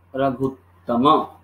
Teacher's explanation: इसको जोड़ते समय हम लोगों ने दीर्घ उ बना दिया